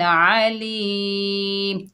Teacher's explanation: यहाँ पर इज़हार हल्की का कायदा हो रहा है, तो यहाँ पर हमने गुन्ना किया वसल की हालत में, लेकिन जब वक़्फ़ किया तो वक़्फ़ की सूरत में 2 पेश ख़त्म हो जाएंगे और आर्जी सुकून देंगे मीम को, तो वक़्फ़ होगा वक़्फ़ बिल अस्कान। मद बनेगी मद्दे आरिज़ ली सुकून, यानी 2 से 5 अलिफ की मिकदार खींच कर पढ़ सकते हैं